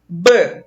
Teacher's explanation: Para esse B, que é do nosso alfabeto ser pronunciado, um lábio tocou no outro. Ó. Então, você está tendo um som bilabial.